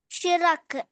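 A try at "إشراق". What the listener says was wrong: ആ ഇഷ്റാഖ്. ആ കണ്ടോ, റാന് അലിഫ് കൊണ്ട് നീട്ടി അല്ലേ. ഇഷ്റാഖ്.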